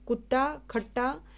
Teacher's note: स्वयं से संयोग करने का अर्थ यह है कि यदि एक ही ध्वनि 2 बार आए लगातार तो उसको बोलते हैं युग्मक ध्वनि